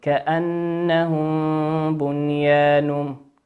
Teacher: كأنهم، الميم في كلمة كأنهم، الميم الأخيرة في كلمة، في آخر الكلمة، هي ميم ساكنة أتى بعدها حرف الباء، أتى بعدها حرف الباء، والباء من حروف الإخفاء الشفوي